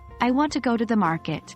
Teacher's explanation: the words want, go, and market are stressed